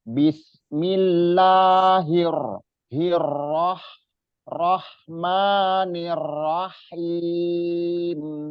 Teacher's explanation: Hi ini jangan sampai tipis karena ha domir itu yang ada yang makrotnya di pangkal tenggorokan.